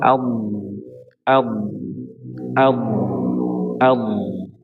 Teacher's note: Huruf D ini dari Aqsal hafah menuju muntahal hafah.